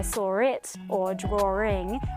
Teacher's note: other thing in Australian accents called intrusive R and that's when we add an R sound when a word isn't even spelled with an r in the first place it usually happens on words that are spelled with a W